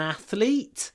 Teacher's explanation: Stress on the first syllable.